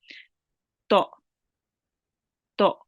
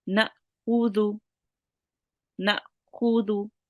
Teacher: making a different kind of sound which comes from the bottom of my throat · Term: soft jerk